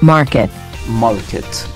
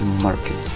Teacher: In American English, market. Market, we do pronounce the R